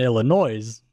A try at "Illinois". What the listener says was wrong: Illinois. You said Illinois. It's Illinois. The S is silent.